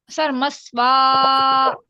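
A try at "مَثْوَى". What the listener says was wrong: या की जो आवाज ही नहीं आई, नो, या की आवाज ही नहीं आई। नहीं, कुछ नहीं करना है हमें। यहाँ पे ये या है ना, साकिन हो गया, तो हमें जबान को ऊपर उठा के रुक जाना है। मस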